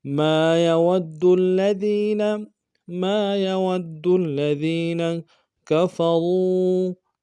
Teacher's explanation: را کو واؤ کے ساتھ ملانا ہے، واؤ مدہ، را کو موٹا ادا کریں گے